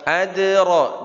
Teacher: Adra dal qalqalah sughra walaupun di tengah tetap harus jelas